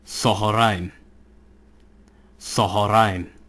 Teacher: Qames makes an a sound, and the hatef qames makes an o sound.